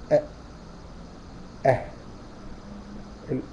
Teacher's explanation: اقصى الحلق، منطقه الاوتار الصوتيه. لما تيجي تعرف الهمز والهاء تدخل عليها الهمزه مفتوحه وتسكنها فتقول أه.